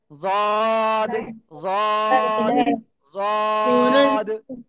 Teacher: জিব্বার গোড়ার কিনারা, উপরে মাড়ির দাঁতের গোড়ার সাথে লাগিয়ে